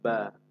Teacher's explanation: দুই ঠোঁটের ভিজা অংশ হতে পাতলা আওয়াজে